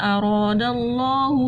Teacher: اللہ کے لام کو ہم نے موٹا پڑھ لیا کیونکہ اللہ کے لام سے پہلے زبر آ گئی